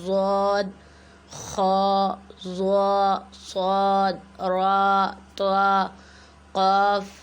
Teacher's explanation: آیت نمبر 15 سے جو ہمارا سٹارٹ ہو رہا ہے اس کے اندر ہمارے گرین کلر کے جو الفاظ آ رہے ہیں ان پر ہم نے آواز کو موٹا کرنا ہے، یعنی بھاری بنانا ہے